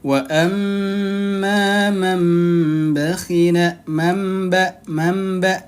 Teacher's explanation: dia diganti ke huruf dari nun sukun diganti ke huruf mim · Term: iqlab